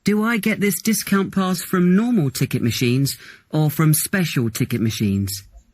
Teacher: your voice goes up in the first part of the question and down in the second part